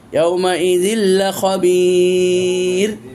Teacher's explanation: তানবিনের পর লাম এসেছে, ইদগাম হয়েছে, কিন্তু গুন্না হবে না। তানবিনটাকে আপনি ইদগাম মানে লামের ভিতরে ঢুকাই দিয়েছেন। · তানবিনের উচ্চারণটা ছিল নুনের উচ্চারণ, সেটাকে আপনি লামে ঢুকাই দিলেন, তখন তানবিনটা লাম হয়ে গেল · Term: ইদগাম নাকিস